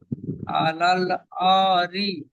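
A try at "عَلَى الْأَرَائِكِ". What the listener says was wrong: রি কেন? আলাল আ র হবে। আ র।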